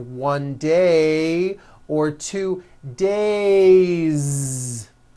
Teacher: It's not days, unvoiced. It's days with a voiced Z ending.